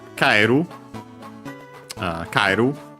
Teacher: The accent, by the way, of kairu is on the ka.